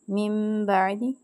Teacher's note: اب نون ساکن کے بعد با آ رہا ہے تو یہاں پہ اقلاب کا قاعدہ لگے گا اور ہم نون کی آواز کو میم میں بدل کے پڑھیں گے